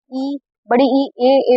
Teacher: ई, बड़ी ई, ए बोलोगे तो सिर्फ अग्र भाग जो है ना जीभ का वही उठ रहा है। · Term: अग्र स्वर